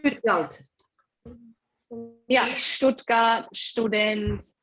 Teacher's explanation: So S sounds like sh